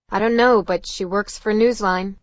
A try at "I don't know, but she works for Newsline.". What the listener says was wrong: It's not stress. The stress is here. There's the stress. But in she, there's no stress.